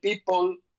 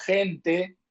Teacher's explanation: cuando un inglés dice people no metemos gente y es porque people tiene dos bilabiales y gente no tiene ninguna